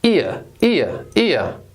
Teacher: we have the short I followed by the schwa sound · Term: diphthongs